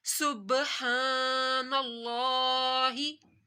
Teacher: सुब बाक पे कलकला